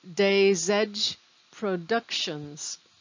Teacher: So the S on days connects to the E in edge like it's one word.